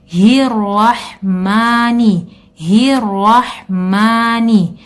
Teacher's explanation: Kemudian juga haknya keluar dari tenggorokan bawah dan langsung adaptasi ke huruf ro yang di sebelahnya dan disambut dengan ha yang keluar dari tenggorokan tengah.